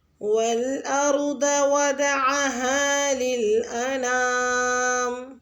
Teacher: والارض میں واو پہ ہونٹوں کو گول کریں اور ضاد کو پر یعنی موٹا ادا کریں